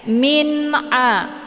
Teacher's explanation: harakat tanwinnya dibunyikan secara jelas atau jelas bunyi n-nya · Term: izhar Hakiki